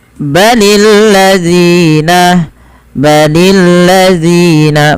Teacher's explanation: panjangkan zi sepanjang dua harakat karena dia ada mad thabi'i.